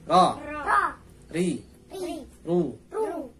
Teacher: Ro makhrajnya ini ujung lidah agak masuk dikit, bertemu dengan gusi atas.